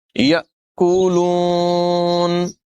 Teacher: حَبًّا فَمِنْهُ، یا یأکلون، حمزہ ساکنہ میں جھٹکا ہوگا، جھٹکا دے کر ادائیگی کریں گے